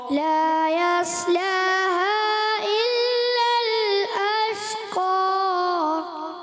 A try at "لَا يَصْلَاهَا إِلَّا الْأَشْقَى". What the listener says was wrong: ترتیل میں آپ نے مد کو بھی پورا کرنا ہے. مد کو پورا کریں. مد منفصل ہے مگر اس کو آپ کھینچیں اور لا یصلہ صاد کو موٹا رکھیں. لا یصلہا الا الاشقى.